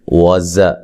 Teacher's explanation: زا کو سختی سے ادا کریں گے اور سیٹی کے ساتھ ادا کریں گے